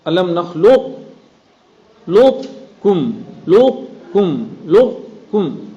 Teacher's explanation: یہاں دھیان دیں گے قاف کی صفت استعلا کو باقی رکھنی ہے, لیکن قلقلہ نہیں ہو جائے گا.